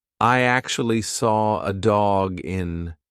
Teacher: because we have a hard consonant dog and then a vowel when you've got that hard consonant followed by a vowel just push the two together like it's one word